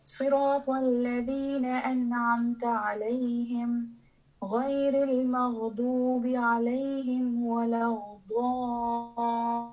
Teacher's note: صراط الذين أنعمت عليهم غير المغضوب عليهم ولا الضالين. What you are doing is that you add an غين between the lam and the ضاد. You're saying ولا غض.